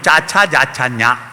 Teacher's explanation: അണ്ണാക്കിൽ വ്യഞ്ജിപ്പിക്കുന്നത് അണ്ണാക്കിന് താലെന്നറിയും താലവ്യം